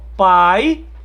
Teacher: No caso de pai, nós temos um ditongo decrescente. Por quê? Porque a vogal vem antes. Ó. Pai, o A, vogal, e I, uma semivogal.